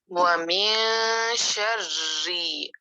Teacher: کو، ومن شرری، را باریک، شرری دو را پڑھنے ہیں، اور را کو باریک پڑھنا ہے، زیر والا را ہے اس لیے